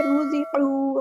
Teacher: را کو ہم یہاں پہ پورا ادا کریں گے، ہیوی لیٹر ہے، زا کو سختی سے ادا کریں گے اور ہلکی سی سیٹی آئے گی.